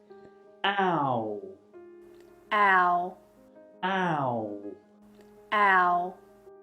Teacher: you allow your mouth and your lips to close as you finish on the position of the U or oo sound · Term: ow sound